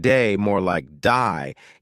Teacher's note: Australian accent. They may say words like day more like die, giving words a slight twist.